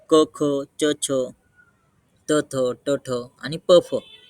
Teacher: खर प्रत्याहारातील वर्णांचा बाह्य प्रयत्न विवार श्वास आणि अघोष असतो